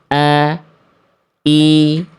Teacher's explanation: Makhraj hamzah itu dilafalkan dari tenggorokan paling bawah atau dari tenggorokan pangkal.